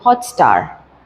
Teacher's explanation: So the stress is being put on the second syllable. So first is unstressed, the second is stressed.